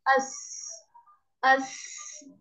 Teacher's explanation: अस ऐसे इसकी अपनी कोशिश करनी है, ताकि आपके सीन में सीटी आए